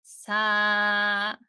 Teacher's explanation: Notice how the voice engages much more firmly. It feels richer or thicker. Instead, sa sa Imagine mixing in some breath into the voice.